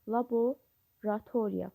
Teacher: Laboratoriya sözündə isə ikinci o a kimi tələffüz olunur.